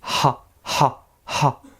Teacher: Si je dis ha, ha, ha, corde vocale, elle ne vibre pas. C'est bien sur une consonne sourde.